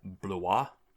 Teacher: So when I hear English speakers try and approximate the name, they often say Blois, like they turn it into 2 separate syllables and turn the glide into a full vowel to compensate